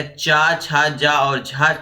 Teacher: च छ ज और झ क्या कहलाते हैं तालव्य व्यंजन कहलाते हैं